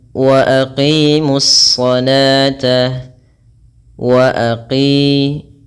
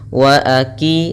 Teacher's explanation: panjangkan 'qi' selama dua ketukan, dan berhati-hatilah agar tidak menggantinya dengan kaf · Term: qof